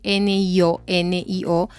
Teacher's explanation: cuando lo pronuncias muy rápido y cuando lo pronuncias con flojera tiene la sensación de la eñe O cuando lo pronuncias con más fuerza